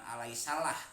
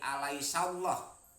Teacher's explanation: Alaisallah ada lam jalalah tafhim, dibacanya tebal, bukan alaisalah tapi alaisallah. Jadi lam jalalah tafhim dibacanya tebal karena sebelum lafadz Allah berbaris fathah